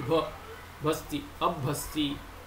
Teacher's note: Hasti, bakara is the jashtam of pakara, pa pha ba. Then this bakara will influence the hakara to become mahaprana of bakara, which is bha